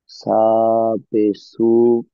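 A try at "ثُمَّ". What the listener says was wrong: জি না, যেহেতু সার পরে মিমের পরে তাসদিদ আছে।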